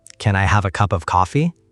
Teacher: The N links to the I. The V links to the A. The P links to the O.